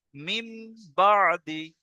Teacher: নুন সাকিনের পরে বা এসেছে তাই নুন সাকিনকে মিমের দ্বারা পরিবর্তন করে এক আলিফ গুন্না সহ পড়তে হবে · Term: ইকলাব